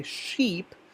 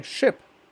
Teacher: when you say sheep its duration is much more but when you say ship starts and ends quickly